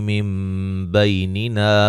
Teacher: نون ساکن کا یہاں اقلاب ہوگا، نون کو میم سے بدل کے پڑھیں گے